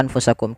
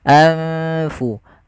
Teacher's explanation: Kemudian di lafal anfusakum ada bacaan berupa ikhfa. Adanya nun sukun bertemu dengan huruf fa, yang dimana nunnya disamarkan ke huruf fa. Nunnya disamarkan ke huruf fa, jangan diganti.